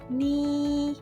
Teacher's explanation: First tone is a flat tone. The pitch does not change. So when you read first tone, ni, please keep the pitch flat and even.